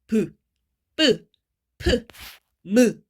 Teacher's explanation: 이 입술이 붙었다가 떼지면서 거기에서 공기의 흐름이 잠깐 멈췄다가 나오는 소리예요. 입술 소리, 입술 부분. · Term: 양순음